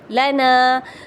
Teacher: لانا، تو یہ جو لانا ہے نا تو یہ غلط ہے، لام کے اوپر سمپل زبر ہے تو ہم اس کو سمپل زبر ہی پڑھیں گے، جبکہ نون الف زبر نا الف مدہ ہے تو ہم اس کو ہی کھینچیں گے، زبر کو نہیں کھینچیں گے